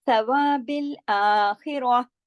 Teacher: جب بھی عارضی سکون کیا جاتا ہے تو تا مربوطہ ہا میں بدل جاتی ہے. واللہ، اب دیکھیں واو کو موٹا نہیں کیا، ہا کو موٹا نہیں کیا، لفظ اللہ کے لام کو موٹا کیا.